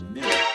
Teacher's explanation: Town becomes tan Crown becomes Crown Crown now l sound so you drop every single dark l